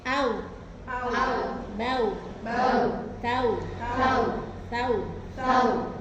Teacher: Atau au, nah terlalu cepat au, nah itu nggak boleh. Jadi tetap harokatnya hamzah ini dipenuhi 1 harokat dulu baru ke wawu. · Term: huruf lin